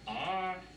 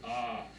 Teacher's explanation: In other words, it had a rising and falling ah.